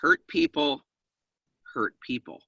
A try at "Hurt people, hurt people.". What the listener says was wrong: There has to be a pause in between. Otherwise, it sounds like a demand. But that's not what we're saying. No, it's hurt people. Hurt people.